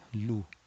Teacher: lam with a dhamma, yes, it will be lu without raising the back of the tongue